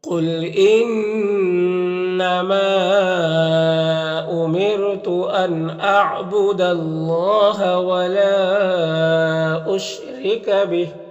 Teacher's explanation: یہاں پر نون میں اظہار حقیقی ہوگا، اور یہاں پر اللہ کے لام سے پہلے دال کے اوپر زبر ہے تو اللہ کے لام کو پر پڑھیں گے۔ ولا میں مد منفصل ہے، اور را کے نیچے زیر را کو باریک پڑھیں گے، اور یہاں پر وقف کریں گے تو کھڑی زیر سکون سے بدل جائے گا، تو اس طرح سے پڑھیں گے قل انما امرت ان اعبد اللہ ولا اشرک به۔ · قل قاف حروف مستعلیہ میں سے پر پڑھیں گے